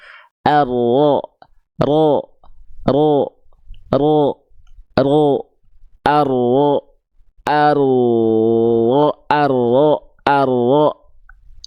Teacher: jadi si ujung lidahnya banget tuh ya dia tidak menyentuh tapi membuat malah membuat sedikit celah namanya furjah kecil celah kecil untuk sifat tawasud dari huruf ro-nya